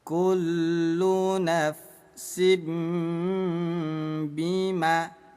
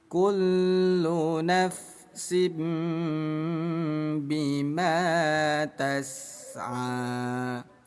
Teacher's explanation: Yang tadinya nafsin bima menjadi nafsim bima. Baca samar dan dengung 2 ketukan. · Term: hukum iklab